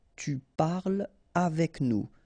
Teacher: So no liaison here between parle and avec